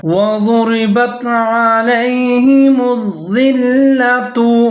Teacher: وَضُرِبَتْ عَلَيْهِمُ الذِّلَّةُ واو زبر کے بعد زواد پیش ہے، اس کو آپ نے زواد کو حرف کو موٹا کر کے پڑھنا ہے. آگے را جو ہے اس کے نیچے زیر ہے، اس کو باریک کر کے پڑھنا ہے. وَضُرِبَتْ عَلَيْهِمُ الذِّلَّةُ میم پیش کے بعد دال کے نیچے زیر ہے اور مشدد ہے تو ان کو دونوں کو ملا کے مضبوطی کے ساتھ پڑھیں گے.